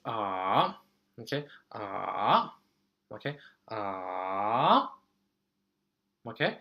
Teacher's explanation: I have to go down first and go up